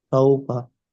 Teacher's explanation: ওয়াউলিন নরম আওয়াজে তাড়াতাড়ি পড়তে হয়।